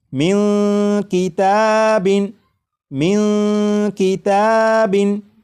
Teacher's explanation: اس نون ساکن کی آواز کو ناک میں چھپا کر غنہ کر کے پڑھیں گے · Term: اخفا